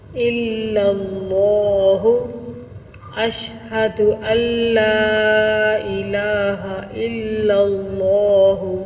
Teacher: لفظ اللہ کو یہاں موٹا کر کے پڑھیں گے، پر کر کے پڑھیں گے۔